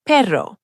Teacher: The double R, like in pero, dog, or caro, car, is a full trill. Your tongue vibrates against the roof of your mouth.